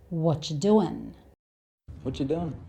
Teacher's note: It's quite common to change the ing sound to the n sound.